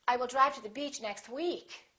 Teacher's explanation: if you really want to emphasize that you're saying week, you can put a little more extra stress on the word week.